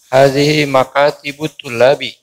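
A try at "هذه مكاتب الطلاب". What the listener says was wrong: Tulabi. Sahih.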